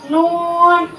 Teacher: نون زبان کا کنارہ اور دانتوں کی جڑ کے تالو کے جانب والے حصے سے ادا ہوتا ہے